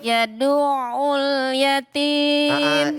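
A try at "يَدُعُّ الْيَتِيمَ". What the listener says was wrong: Ini di ainnya ini ada namanya nabroh. nabroh tahu? Nabroh itu ditek. Nih ditekan makanya yadu'ul.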